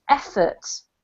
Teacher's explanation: the emphasis on the first syllable